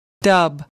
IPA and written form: dʌb (dub)